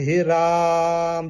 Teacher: रा को हम जो है अह ज्यादा खींच खींचते हैं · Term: प्लुत स्वर